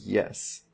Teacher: we have that y sound, and that's a glide, so we get that little J there for a y